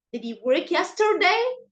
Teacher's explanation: You have to rise in your intonation. You have to start in a low voice, then you raise it at the end.